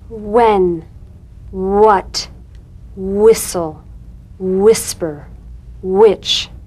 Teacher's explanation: Words that begin with wh are pronounced hw.